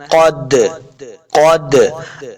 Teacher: دال ساکن ہے تو یہاں پہ ہم نے قلقلہ کرنا ہے